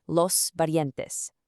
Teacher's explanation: giving a nice soft tap to that R